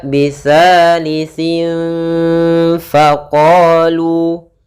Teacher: harus kita samarkan suara tanwinnya atau suara huruf nnya atau suara nunnya kepada huruf Fa maka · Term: ikhfa Hakiki, ikhfa hakiki